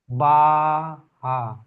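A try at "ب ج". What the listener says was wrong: বা, জিম, জিমের নক্তা একটি নিচে থাকে, হার নক্তা থাকে না।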